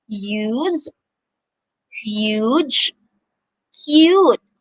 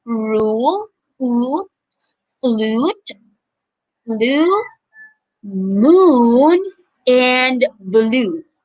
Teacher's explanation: the long vowel u has two sounds one with you and one with ooh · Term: long u sound